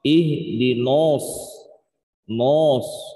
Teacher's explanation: Kalau langsung naknya ini suaranya nanjak langsung ke atas ya, karena mengikuti huruf shad yang tebal, biasanya naknya itu ikut tebal juga.